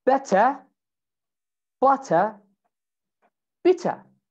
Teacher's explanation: in british english you have two things now first you say the t and second you remove the r